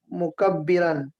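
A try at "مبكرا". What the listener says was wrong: مبکرن. مبکرن، مکبر نہیں، مبکر.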